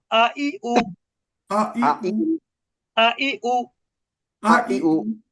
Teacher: হামজার উচ্চারণ কিন্তু একটু হালকা ধাক্কার মতন